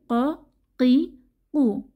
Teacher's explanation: জিহবার গোড়া তার বরাবর উপরের তালুর সঙ্গে লাগিয়ে উচ্চারিত হয় 2 নুক্তাওয়ালা কফ। কফ এটিও একটা মোটা হরফ। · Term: দুই নুক্তাওয়ালা কফ